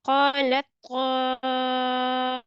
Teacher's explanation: You have to pronounce طا with full mouth, and there is mad muttasil. You need to prolong it equal to 5 alif.